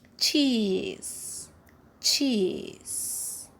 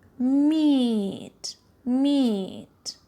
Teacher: towards the hair palette so it's a front vowel yes and the tongue is raised towards a closed position so it's a closed vowel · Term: long e